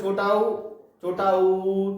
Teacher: तो इसमें ओठ गोल आकृति के हो जाते हैं। · तो इसके उच्चारण में जो ओंठ होते हैं अपने, तो वो ओंठ गोल हो जाते हैं। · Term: वृत्त मुखी स्वर, वृत्तमुखी स्वर